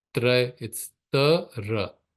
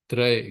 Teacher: Tray, it's coming from the tongue touching the teeth.